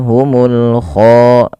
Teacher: kha-nya agak tebal karena dia huruf isti'la dan dia juga mad tabi'i 2 harakat run.